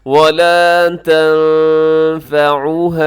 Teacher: یہاں نون ساکن کے بعد فا ہے، آپ یہاں اخفا کیجیے گا